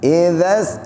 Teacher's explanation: Bukan za. Lidahnya keluar dikit.